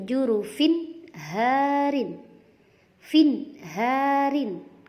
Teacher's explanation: cara membacanya adalah terang dan jelas. Tidak boleh dibaca dengung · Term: idhar halqi